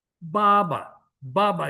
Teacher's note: Ang first na ba is fourth tone. Pero ang second na ba in Baba is neutral.